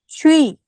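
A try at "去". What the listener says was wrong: आखिर में उई के नहीं आनी चाहिए, डबल वाओ वाला स्टाइल आके, यानी कि आवाज वहां जाके रुक जाए। ऊंची। या की साउंड नहीं है, आप कर रही हो। ऊंच। हाँ, छी। आप कहते हैं ना, वो धोबी कपड़े धोता है, कहते हैं छुआ छू। छुआ छू छू।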